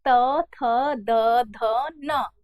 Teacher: त वर्ग की बात करते हैं त थ द ध न बहुत अच्छे से स्पष्ट हो रहा है कि जीभ जो है वो दांत को स्पर्श कर रही है